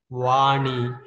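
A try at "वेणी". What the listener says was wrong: Veni, it's not Vani, Veni.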